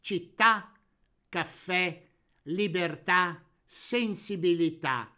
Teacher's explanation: Parola tronca, in cui l'accento cade sull'ultima vocale.